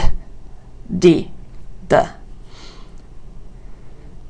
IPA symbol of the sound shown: d